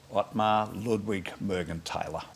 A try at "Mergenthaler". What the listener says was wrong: The TH is not pronounced, it's just Morgenthaler.